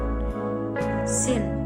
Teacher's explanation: Jadi sin termasuk memiliki sifat hamas, yaitu nafas yang berhembus. Jadi dia kebalikan dari jahar.